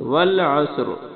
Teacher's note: جب وقف کریں گے تو را پر جزم آ جائے گی تو را موٹا پڑ جائے